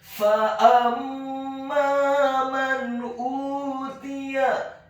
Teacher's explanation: huruf alifnya dibaca tipis dhammah dua harokat karena setelahnya ada huruf waw sukun